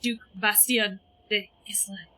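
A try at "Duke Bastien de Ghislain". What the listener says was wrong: It was mainly that you said it all in separate words. tu vous dites along avec les uns connected.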